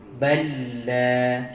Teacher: Jumpa lam dengan lam ni sama. Kalau jumpa macam ni, lam pertama dimasukkan ke dalam lam kedua. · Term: Idgham mutamasilain